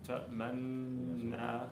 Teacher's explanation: By rounding the lips right after pronouncing a part of rounding the lips right after pronouncing a part of the stressed noon. And it continues throughout the longest ghunna.